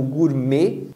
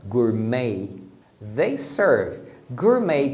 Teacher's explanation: nós pronunciamos como Gourmet com esse e final fechado mas inglês eles vão pronunciar com o som de Ei